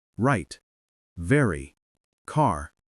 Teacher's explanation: For the American R, stops curling her tongue like a pretzel and instead rounds her lips a bit and pulls the tongue back